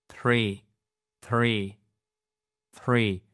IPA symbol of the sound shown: θ